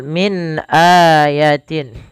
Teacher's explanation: min ada nun mati bertemu hamzah maka dinamakan dengan bacaan izhar. Suara nunnya harus dibaca dengan jelas.